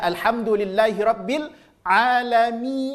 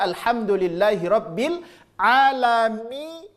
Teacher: Al-jauf nggak boleh masuk ke hidung. Mimnya masuk ke hidung, iya-nya nggak boleh masuk ke hidung.